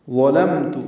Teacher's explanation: ظا پر پڑھیں گے، لام باریک میم ساکن پہ اظہار، تا کو جلدی پڑھنا